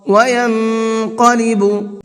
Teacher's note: نون کے اندر بھی اخفا کریں گے، آواز کو ہلکا تھوڑا سا روک کر کے پڑھیں گے